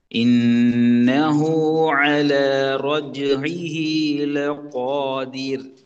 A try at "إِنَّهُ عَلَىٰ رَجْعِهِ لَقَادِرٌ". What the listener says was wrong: ராட sound மட்டும் இன்னும் கொஞ்சம் குறையணும் என்றால் ரா வல்லினம் மிகுது. காஃப்ட வல்லினம் மிகுது. அல ரோஜு திருப்பி லகோ. அப்ப இந்த ரெண்டையும் விட வேறுபட்ட மாறுபட்ட சவுண்ட்ல தான் ஈர் என்ற சவுண்ட் வரணும்.